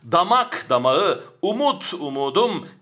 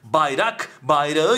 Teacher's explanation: p ç t K'nin bakın dikkat b c d g ya da yumuşak g'ye döndüğünü görüyoruz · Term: ünsüz yumuşaması